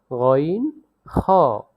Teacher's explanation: হলকের শেষ হইতে উচ্চারিত হয় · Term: মাখরাজ